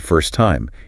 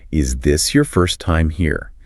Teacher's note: if you listen to a native speaker, the stress is almost always on first time.